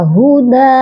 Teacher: دال کے اوپر 1 زبر کو پڑھا جائے گا اور جو 1 زبر ہے اس کو 1 الف کے ساتھ بدل دیا جائے گا۔ تو اس طرح اس ورڈ کو ہم 1 الف جتنا لمبا کریں گے۔